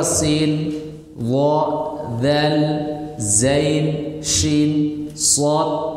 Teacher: rakhwah rakhwah artinya mengalirnya suara suara itu mengalir